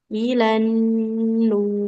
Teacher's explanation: rnya tebal karena ro sukun didahului oleh huruf dommah